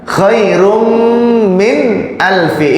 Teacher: Nah, ini ada tanwin bertemu dengan mim idgham bi gunnah, maka didengungkan.